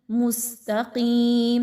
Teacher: ता को बारीक रखेंगे और कफ को मोटा पढ़ेंगे